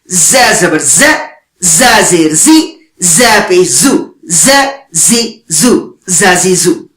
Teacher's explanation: زا پڑھتے ہوئے زبان دانتوں کے ساتھ نہیں لگنی چاہیے · ز اوپر نیچے والے دانت ملیں گے